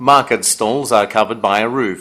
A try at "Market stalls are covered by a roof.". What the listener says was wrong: stall 잘 안 들려요. L 발음이 안 들려요.